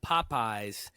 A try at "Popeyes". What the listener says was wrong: Just Popeyes. Feel like y'all are adding an H after the second P. Popeyes.